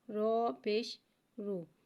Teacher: رو پہ پیش آ رہا ہے، لہٰذا ہم رو کو موٹا ادا کر کے پڑھیں گے۔